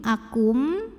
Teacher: Berikutnya ada idgham bi gunnah karena nun sukun menghadapi huruf mim, maka nun sukun ini masuk ke mim akum dan bunyi m-nya tahan kurang lebih 2 harokat, masuk disertai bunyi dengung.